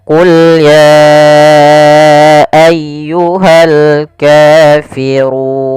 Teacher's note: Kemudian pelafal ayyuhal kafirun ditekan ya-nya.